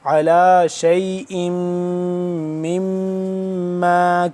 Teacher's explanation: غنہ، اور پھر میم زیر میم اس میم پہ بھی غنہ، دونوں میم پہ غنہ ہوگا، میم مشدد ہیں دونوں